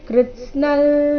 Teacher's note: ಅನುಸ್ವಾರದ ಉಚ್ಚಾರಣೆ ಇಲ್ಲಿ ನಾಸಿಕ ಲ ರೀತಿ